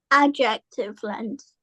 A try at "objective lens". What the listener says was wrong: No, not adjective, not describing word. Objective lens.